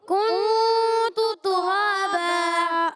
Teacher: را پر کھڑا زبر، را کو پر بھی کرنا ہے اور ایک الف کھینچنا بھی ہے. دو زبر کی تنوین کو الف سے بدل دیں گے، اس کو کہتے ہیں وقف بالابدال مال.